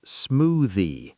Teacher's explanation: The word smoothie is smoothie. Stress the first syllable.